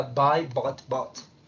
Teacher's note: Caught, taught, thought, fought, bought. Pero en americano va a sonar más como hacia una A, un intermedio entre la O y la A.